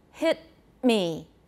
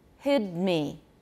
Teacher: the t at the end of the word is longer than the d · So the voiceless stop is longer than the voice stop.